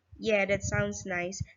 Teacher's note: has fast speech rate and begins relatively low in her pitch range. Now, the low pitch onset becomes particularly noticeable when it is contrasted with the next intonation phrase in line 29.